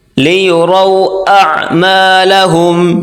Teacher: عین کو گلے سے نکالیں زور لگا کر